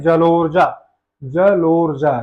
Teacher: लो पे ज्यादा हमें बल देना पड़ रहा है